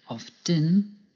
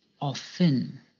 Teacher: Often can be pronounced 2 ways, by pronouncing the T, often, or by not pronouncing the T, often. Both forms are correct and depend on where you live.